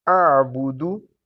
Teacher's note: آبودو نہیں کہنا، وہ مجہول انداز ہو جائے گا، غلط ہے